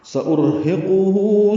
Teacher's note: ہو الٹا پیش ہے، مد صلہ ہے، 2 حرکات لمبا کریں گے